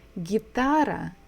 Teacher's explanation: So we stress the second syllable.